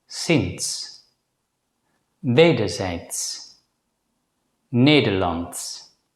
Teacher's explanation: Another letter combination that's worth mentioning is DS. This is usually pronounced as a voiceless consonant ts, which is the same as the last consonant in the English word ants.